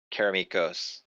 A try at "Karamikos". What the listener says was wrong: Karamikos. There's an M No, you've been calling me some form of caramel. Carameligos or whatever.